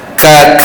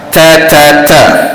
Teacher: Yang mana huruf kaf ni berada di anak tekak ataupun anak lidah. Huruf ta tekan pada gusi atas. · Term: Syiddah